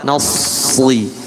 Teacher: secara makhraj sama dengan sin, tapi ujung pangkal lidahnya yang naik sehingga suaranya tebal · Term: sod